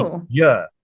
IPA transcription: ɪur